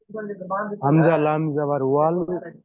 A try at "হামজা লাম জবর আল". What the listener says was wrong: হামজা লাম জাবার ওয়াল নয়, হামজা লাম জাবার আল।